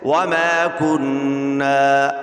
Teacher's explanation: الف سے پہلے زبر ہے تو یہ الف مدہ ہے، یہاں پہ ایک الف کی مقدار کھینچنا ہے